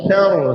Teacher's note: Ingat ya bukan sa yang tebal ra sar salah. Sa nipis ra tebal